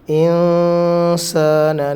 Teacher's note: നൂനിനെ വ്യക്തമാക്കാതെ മണിച്ചോതുക